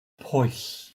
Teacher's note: his dialect has the first part of the diphthong as a short O sound rather than oo